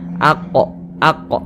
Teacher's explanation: huruf qf itu termasuk salah satu huruf Qalqalah kalau dia sukun ya kita pantulkan aqo aqo begitu ini termasuk kepada Qalqalah apa Qalqalah kecil Qalqalah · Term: Qalqalah sugro